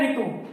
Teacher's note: हमें जो री बोलने में जो है एक मात्रा का ही समय लग रहा है